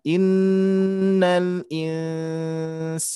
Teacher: gunnah nun bertasdid dan nun sukun bertemu sinnya harusnya ditahan ya, ditekan.